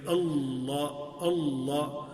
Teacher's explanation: جو سامنے والا حصہ ہے تو وہ دانتوں سے نہیں، دانتوں کے اندر والے مسوڑوں سے وہ لگے گا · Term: لام